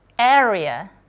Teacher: Kalau R-nya dia ada di tengah dan di antara dua vowel, R-nya nanti dibaca rhotic juga.